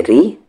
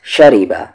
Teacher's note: शिन पे ज़बर है शा, रा पर ज़ेर है री, रा यहाँ पर लाइट होगा क्योंकि ज़ेर है इस पर, बा पे ज़बर है बा, शरीबा।